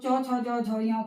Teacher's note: तालु, क्योंकि ये तालु को स्पर्श करते हुए उच्चारित हो रही हैं।